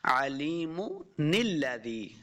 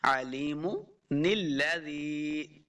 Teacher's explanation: اگر ہم علیم کے اوپر وقف نہیں کرتے، اسٹاپ نہیں کرتے، تو پھر ہم نے اس نون کے ساتھ لام کو ملا کے پڑھنا ہے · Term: نون قطنی